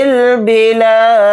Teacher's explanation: گا، الف نہیں پڑھا جائے گا، با کو جلدی پڑھیں گے، لام کے ساتھ الف مدہ ہے، لام الف زبر لا کو تھوڑا کھینچ کر پڑھیں گے ، دال کو ساکن بنا کر پڑھیں گے حالت وقف میں۔